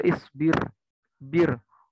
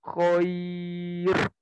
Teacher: huruf ro yang berharokat sukun dan sebelumnya itu kasroh, ya, atau ya, itu dibaca tipis bila huruf ro-nya tidak bertemu dengan huruf isti'la. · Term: ro tarkik